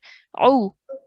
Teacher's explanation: The ayn sound, try and make that from the middle of your throat.